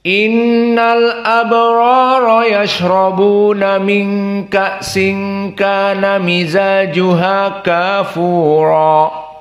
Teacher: Maka ra-nya mufakhamah. Semua ra di sini mufakhamah kecuali wars.